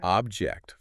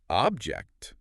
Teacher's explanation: Object, first syllable stressed. It's a thing, right? But object, second syllable stressed, it means to disagree.